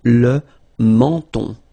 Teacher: So you get two nasal. The first one here, en, and then the second one here, on.